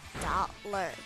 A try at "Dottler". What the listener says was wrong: You said Dottler. No, Dottler. There's an L. Yes, there's an L in there. There's an L in there.